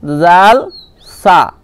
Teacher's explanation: সা যখন উচ্চারণ করবেন জিভের আগাটা সামনের উপরের দুই দাঁতের আগার সাথে লাগাবেন